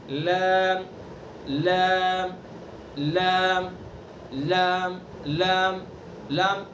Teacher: لام کا مخرج زبان کا کنارہ ایک زاحک سے لے کر دوسرے زاحک تک اور اوپر کے دانتوں کے مسوڑے. زبان کا کنارہ، میں نے کنارہ بتایا نا، یہ کنارہ ایک زاحک سے دوسرے زاحک تک اور اوپر کے دانتوں کے مسوڑے، یعنی گھمائیں گے.